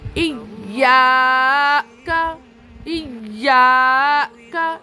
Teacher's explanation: الف سے پہلے زبر آیا، اسی لیے تھوڑا کھینچ کے پڑھنا ہے